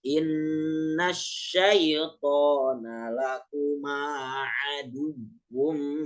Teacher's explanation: Yang aduwu itu nggak boleh digunahin karena dia bukan idgham